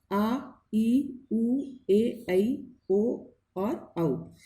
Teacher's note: दीर्घ स्वर, इन स्वरों का उच्चारण में ह्रस्व स्वर से दुगना समय लगता है, इनसे दुगना समय इसमें लगता है, इसलिए दीर्घ स्वर कहलाते हैं।